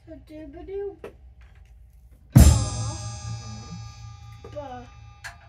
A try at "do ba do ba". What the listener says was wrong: Do ba do ba. So you're adding the extra upbeat. It's not written in there. It's a ghost note. Do ba do ba. Do ba do ba. Do ba do ba.